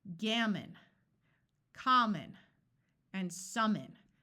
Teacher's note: all of these words the vowel in our accented syllable has its clear short sound while the O schwas in these words